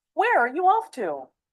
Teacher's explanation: Notice the falling intonation since this is an information question, not a yes/no question.